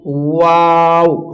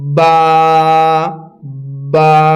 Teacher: ওয়াও হোঁট গোল করে, এবং বা হচ্ছে বা, বা দুই ঠোঁটের ভিজা অংশ থেকে